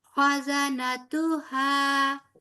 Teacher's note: خا موٹا، ہا اندر سے سینے کی طرف سے اٹھے گا اور باریک، ایک قسم کا سیمی سافٹ اس کی آواز ہوتی ہے.